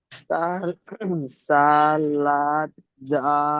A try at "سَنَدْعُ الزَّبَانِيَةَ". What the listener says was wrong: লাম নয়, নুন আছে। সানাদ সানাদ